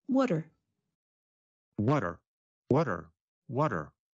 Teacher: the words what and are get combined into one, water